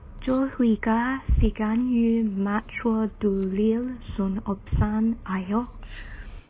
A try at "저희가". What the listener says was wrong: It's got to be more blended, right? All together, the sounds. 저희가. Yeah, if you look at the sound there, that and e together, we learn is kind of like 의.